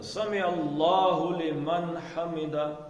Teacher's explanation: ہاں جی، من کے نون کا غنہ نہیں ہو سکتا